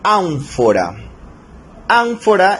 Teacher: Ánfora es una palabra esdrújula, lleva la mayor fuerza de voz en la antepenúltima sílaba, en an